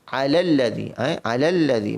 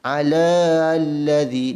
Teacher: Maka ala ini, huruf lam yang berbaris ini bertemu dengan alif lam syamsiah, dia tidak boleh memanjangkan kalimah ala ini terus masuk kepada lam yang baris bersabdu ini.